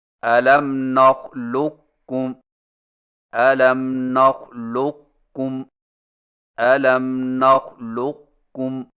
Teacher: قاف کے موٹا پن کو ظاہر کرنے کے فوراً بعد کاف بریک ادا کریں، یعنی اس طرح الم نخلقکم، الم نخلقکم، الم نخلقکم۔ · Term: ادغام ناقص